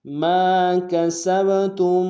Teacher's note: با حرف قلقلہ میں سے جب ساکن ہوگا تو قلقلہ کریں گے